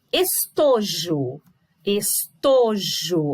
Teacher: o to é a minha sílaba tônica